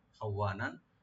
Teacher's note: কানা খাওয়ানান, খাওয়ানান খাটাকে রাইট দিয়ে ওয়া ডাবল কা একালে টানবেন। আর নুন উপর যে তানবিন আছে এখানে আমরা এজাহার করব